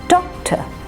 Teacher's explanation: said with more emphasis doctor doc is said with greater force the second syllable which is the unstressed syllable is said rather quickly